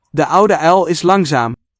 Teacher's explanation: Here we see vocalization of the L coda, which Dutch shares with its neighbor French.